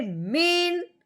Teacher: نون ساکن پہ کوئی غنہ نہیں کرنا، کوئی اخفا نہیں کرنا، بغیر غننے کے اظہار کے ساتھ پڑھنا ہے